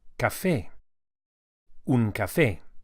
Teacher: we emphasize the a vowel as it has an accent on it which indicates the stress